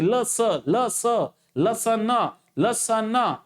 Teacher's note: ल म्हणत असताना आपली जीभ बघा दाताला लागते.